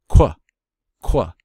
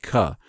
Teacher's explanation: I do apply a small bit of a wah when I pronounce the qua